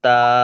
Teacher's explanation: তায়ের উপর খাড়া জবর আছে, এটি আলিফ মাদ্দার সমতুল্য। একে এক আলিফ পরিমাণ টান দিয়ে পড়তে হবে।